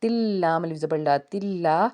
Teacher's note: حرف یرملون میں سے ہے یعنی کہ تنوین کا قاعدہ ہے، تا کے نیچے دو زیر ہیں اور آگے لام آنے کی وجہ سے بیسیکلی ادغام کا قاعدہ ہے مگر یہاں پہ غنہ نہیں ہوگا